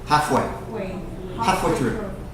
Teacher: the L is so soft in this word that you don't even need to try to pronounce it